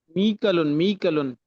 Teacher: اس میں جھٹکا نہیں ہوگا، مئكل ہو جائے گا